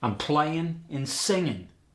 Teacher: Of course, there's dropping the G in the ing.